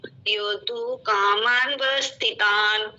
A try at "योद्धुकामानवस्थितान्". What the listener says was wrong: युद्धुकामानवस्थितान्, युद्धुकामा न और वह पूरा बोलना है। युद्धुकामानवस्थितान्, दोबारा बोलिए। देखिए, कामानवस्थितान् कर दिया तो न को आपने छोटा बना दिया, न पूरा बोलना है। योद्धुकामानवस्थितान्।